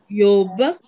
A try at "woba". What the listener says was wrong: Ce n'est pas yo, c'est W ou O. Woba.